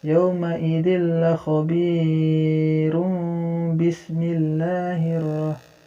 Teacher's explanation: hukumnya tanwin bertemu dengan ba, jadi di sini harus dengung ya